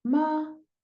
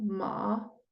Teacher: tiene la misma parte consonante la misma parte vocal pero tiene distinto tono